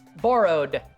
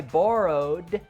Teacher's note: so we have that d sound but no extra syllable